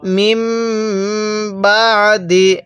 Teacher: এই মিমটিকে সর্বদা আপনি গুন্নাহ করে পড়বেন এই ছোট্ট মিমটাকে কারণ মিম সাকিনের পরে বা থাকলে সেখানে আমাদের গুন্নাহ করতে হয়